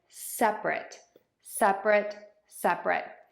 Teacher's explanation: you're going to start by stressing syllable 1 in separate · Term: syllable stress